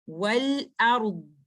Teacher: تو ڈرا جو کہ بینیا کا لیٹر تھا، میں نے اس کو ٹائم دینا ہے، لیکن جب میں رک رہی ہوں لیٹر ضاد پہ تو چونکہ لیٹر ضاد ایک رخاوہ کا لیٹر ہے تو مجھے ذہن میں یہ بات رکھنی ہے کہ لیٹر ضاد کا ٹائم زیادہ ہونا چاہیے لیٹر را سے۔ والارض، آپ نے لیٹر ضاد کو استطالہ بھی کرنا ہے، آپ نے اس کو رخاوہ کا ٹائم بھی دینا ہے، اور آپ نے اس میں استعلا بھی لے کے آنا ہے، آپ نے اس میں اطباق بھی کرنا ہے۔